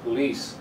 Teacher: The second syllable is the strong one.